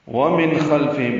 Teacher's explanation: ومن خلفہم, نون ساکن کے بعد خو آنے کی وجہ سے اظہار ہے, اظہار حقیقی یا اظہار حلقی. خلفہم میں خوا پر ہے, لام ساکن لام باریک ہے. فا کو جلدی سے پڑھیں گے.